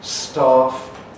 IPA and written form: stɑːf (staff)